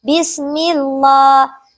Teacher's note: ada huruf mim yang berharakat kasrah berhadapan pada huruf Allah atau lam jalalah sehingga memiliki hukum bacaan lam jalalah tarqiq yaitu dibaca secara tipis · memiliki hukum bacaan Mad Thobi'i dibaca sebanyak satu Alif ataupun 2 harokat